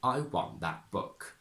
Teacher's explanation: that is not only strong as a content word, but it also needs a little bit of intonation. You can't just glide over it.